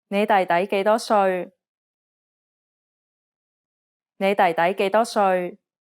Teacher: dip the first syllable of younger brother to tone 4 and lift the second syllable to tone 2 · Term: tone changes